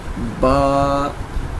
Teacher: یہ دونوں ہونٹوں کے تر حصے سے ادا ہوتا ہے